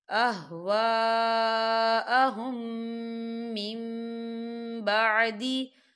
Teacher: یہاں خالی الف سے پہلے زبر ہے اور اس میں مد بھی ہے، تو ہم اسے 4 حرکت کی برابر کھینچیں گے.